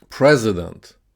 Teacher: So president, the stress is on the first syllable.